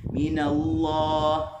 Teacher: kalimah Allah dibaca dengan tebal